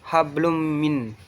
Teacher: Hablum min itu adalah idgham bigunnah karena ada domatain bertemu dengan huruf mim. Cara membacanya masuk dengan mendengung yaitu gunnah. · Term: idom bunah